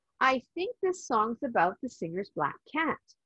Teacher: C in cat is a k sound so you can pronounce 1 k for a little bit longer